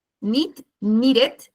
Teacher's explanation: uno de los pocos en donde uno realmente utiliza como que pronuncia la e de la ed